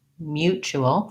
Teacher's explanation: mutual first syllable stress